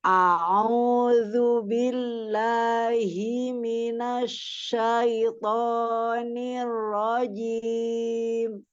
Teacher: nir rojim itu bukan memanjangkan ni-nya